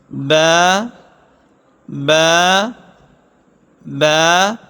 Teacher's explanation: با دونوں ہونٹوں کے تری والے حصے سے ادا ہوتا ہے